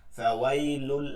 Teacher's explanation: তানবিনের পরে লাম ইদগামে বেলা গুন্না, গুন্না ছাড়া মিলাই পড়তে হবে।